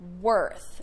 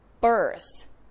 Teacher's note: they have what you call an R-colored vowel, which means the vowel just sounds like eh.